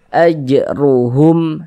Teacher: Huruf ro memiliki harakat dommah atau huruf ro yang memiliki harakat fathah itu dibaca dibaca tabkhim dibaca tebal sehingga pangkal lisan kita naik terangkat ke atas ketika kita mengucapkannya tebalkan huruf rnya ajruhum seperti itu.